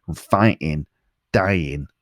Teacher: So you got alive and inside, survive, fighting, riot, and dying. Also, he often doesn't pronounce the G at the end of his ing words